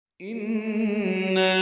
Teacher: تیسری آیت کی انا سے نون مشدد پہ غنہ ہے، اور یہاں پہ مد آئی ہے، مد منفصل، نا الف مد ہے، اور اس کے بعد حمزہ دوسرے کلمے میں آنے کی وجہ سے اوپر چھوٹی مد لکھ دی گئی ہے.